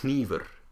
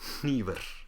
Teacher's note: Icelandic uses unvoiced nasal consonants